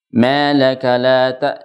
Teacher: kita dengung sedikit sebelum memanyunkan dua bibir kemudian kita memanyunkan dua bibir bersamaan dengan pengguna Jadi manyunnya sepanjang